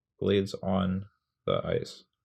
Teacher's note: So blades is stressed, that's one syllable. On the, they're both kind of not stressed. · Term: stressed and unstressed syllables